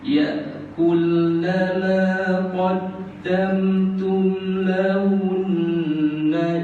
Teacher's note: Lahun tu ada syaddah, kita kena dengung lahun